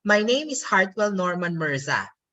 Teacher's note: I go down at the end of the sentence, my tone.